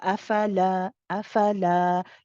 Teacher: Let the lam go for two counts.